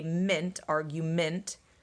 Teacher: The E is flexing to the schwa.